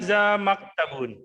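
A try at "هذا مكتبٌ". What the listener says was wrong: Oh, Masya Allah ya.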